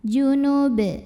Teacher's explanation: Apabila berhenti di sini, baknya disukunkan dan dihukumi dengan qalqalah kubra karena huruf ba-nya sukunnya tidak asli melainkan kita sukunkan. Maka dibacanya dipantulkan dengan pantulan yang besar. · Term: qolqolah kubro